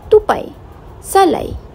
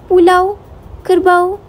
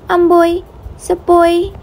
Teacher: Dengan kata lain, diftong dilepaskan sebagai satu bunyi sahaja dan kedua-dua vokal ini tidak dapat dipisahkan.